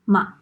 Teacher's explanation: There is actually an additional neutral tone that is not exactly a tone, but we call it a tone anyway. It is more like a short sound.